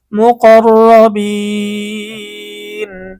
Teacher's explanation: বাইয়া জের বি, নুন জবর না, মু কর রবিন, মদের হরফের পরে অক্ফ করার কারণে মধ্যে আরজি তিন আলিফ টানতে হবে।